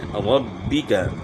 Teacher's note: را کو با کے ساتھ ملائیں گے تو با میں سختی ہوگی شد کی وجہ سے